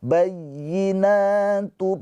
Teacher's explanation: [Musik] maq di sini ada tanwin bertemu dengan huruf mim ya ingat idgham bighunah hurufnya ada empat yan mu ya nun mim dan wau ini huruf mim ketika tanwin atau nun sukun bertemu dengan huruf mim adalah idgham bighunah cara bacanya tanwinnya dileburkan ke huruf mim ditahan dua harakat